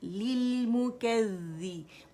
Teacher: ज़ैल मुशद्दद है, बारीकी से अदा होगा